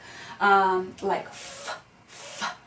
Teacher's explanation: labial dental, which means your lip and your teeth are producing the sound